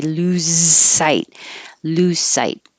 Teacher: Please don't lose sight, even though this is a Z in lose, because the S coming after it is not voiced, the Z will lose its voicing